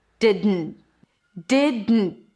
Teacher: We have de and then dn. It's a D. And then you release the air through the nose. That's technically the N. And then you stop it abruptly. That's the T at the end.